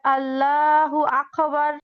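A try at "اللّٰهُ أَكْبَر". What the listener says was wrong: আল্লাহ, আল্লাহ, আল্লাহু আকবার। আকবার, হ্যাঁ আপু, আকো আকো এরকম হবে না, আকবার।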